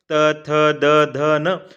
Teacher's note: आप बिना दांतों के स्पर्श किए इन वर्णों का उच्चारण नहीं कर सकते हैं, इसलिए दंतव्य वर्ण है, दांतों के बिना इनका उच्चारण नहीं हो सकता है ना। · अब आपका जिह्वा का जो स्पर्श है वो दंत से हो रहा है, दांतों से हो रहा है, इसलिए दंतव्य वर्ण हो गए।